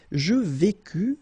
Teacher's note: final S not pronounced